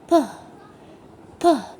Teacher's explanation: ما بيعمليش اهتزاز في الأحبال الصوتية لأنه صوت بيطلع ما بين شفايفي. به به نحس فيه هوا كده، لما باجي أنطقه بحس إن أنا زي ما يكون طلعت فيه هوا. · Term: الفويسلس ساوند